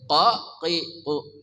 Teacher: qaf dari pangkal lidah